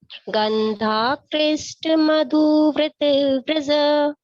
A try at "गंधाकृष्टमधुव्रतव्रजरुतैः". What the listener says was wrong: नहीं व्रज के आगे बोलना, रुते तक, रुते तक।